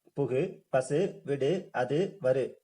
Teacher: இந்தந்த எழுத்துக்களை தொடர்ந்து குற்றியல் உகர எழுத்துக்கள், அதாவது குசுடுதுபுரு வந்து வந்திருக்கு. இந்த மாதிரி தனிக்குறிலை அடுத்து குற்றியலுகிற எழுத்துக்கள் வந்ததுன்னா இந்த எழுத்துக்கள் வந்து தன்னுடைய ஒரு மாத்திரை அளவுக்கு முழுமையா தான் ஒலிக்கும்